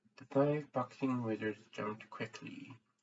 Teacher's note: speaking with a very reduced oral resonance right now and that's the only thing I'm changing